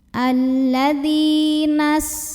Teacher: lagi karena ada ya sukun yang didahului baris kasroh cara membacanya dzal yang kasroh kita panjangkan 2 harokat saja